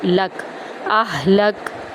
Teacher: کاف یہاں پر باریک ہے، موٹا نہیں پڑھا جائے گا